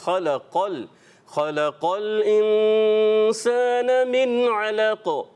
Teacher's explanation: یہ خلق قاف کو جو ہے کیا کرنا ہے، پر کرنا ہے، باریک نہیں. خلق نہیں، خلق خلق الانسان من علق.